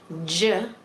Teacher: then we have two sounds that are actually combination sounds so you're combining stopping and then friction